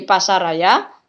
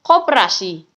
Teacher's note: ada juga gejala pelesapan salah satu fonem yang sama terdapat pada akhir kata dan awal kata yang mengalami proses komposisi